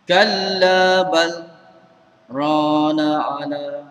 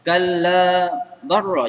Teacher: Jumpa dengan ra ni, kalau ikut kaedah yang sebenar, kaedah yang biasa, lah mati jumpa ra, lah mati tu dia akan masuk ataupun idgham ke dalam ra · cara baca saktah ni kita kena baca dengan izhar, kena jelas